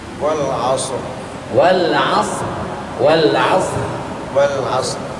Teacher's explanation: sifat ra dia tetap ada getaran di situ